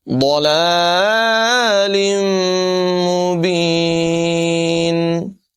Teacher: تنوین کے بعد میم ہے، یہاں پر بھی غنہ کر کے پڑھیں گے، ادغام ہوگا۔